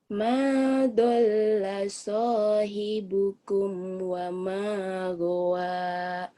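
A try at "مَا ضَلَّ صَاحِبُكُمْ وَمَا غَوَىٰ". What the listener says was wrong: Tinggal lagunya aja ya, lagunya masih naik turun sedikit. Tapi udah enak sih, cuman belum lepas aja nggak apa-apa. Lagu lepas itu karena percaya diri. Percaya diri itu karena bacaan kita sudah yakin benar. Ternyata itu sudah benar, cuman belum yakin 100% ya. Jadi tinggal nanti penekanannya. Ma dhalla sahibukum wa ma gawa. Tuh, kamu nangkap nggak ada irama-irama yang gimana gitu.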